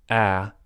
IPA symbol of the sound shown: æ